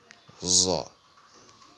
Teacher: Et la position des lèvres à la fin de la prononciation est verticale, comme lors d'un sifflotement